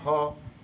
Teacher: ह काकल्य ध्वनि के अंतर्गत आती है।